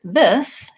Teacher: the word this has, the S actually says S, it's a voiceless sound